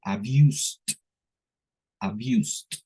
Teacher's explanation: se comen la e omiten el sonido de la e y lo demás pronuncian exagerando un poquito al último el sonido de la d como t